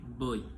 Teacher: initial sound O, tongue position back, tongue height mid, lip rounding rounded. Final sound E, tongue position front, tongue height high, lip rounding rounded. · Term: closing diphthong